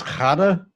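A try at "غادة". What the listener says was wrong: You're saying Gha. It's Gha. It's kind of like an R sound. Or gurgling.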